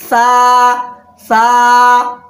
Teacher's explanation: दो दांत के एकदम अगले हिस्से पे ही आपको लगाना है, जबान की नोक और सामने वाले दो दांत का किनारा। किनारा मतलब दांत का एकदम से फर्स्ट वाला हिस्सा आपको जो है उस तरह से लगाना है। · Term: मखरज